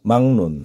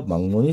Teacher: 받침 기억 디귿 비읍 뒤에 ㄹ은 니은으로 바꿔준다